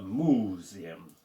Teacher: we're pressing down on the penultimate uh syllable